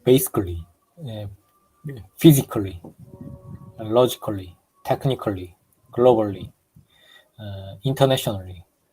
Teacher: Because there is schwa sound, so we have to assume that the A is not there.